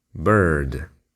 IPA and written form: bɜːrd (bird)